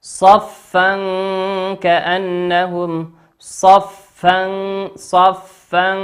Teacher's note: تنوين أتى بعده حرف الكاف، والكاف من حروف الإخفاء.